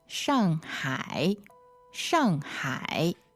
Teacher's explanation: so the tones on that are fourth and third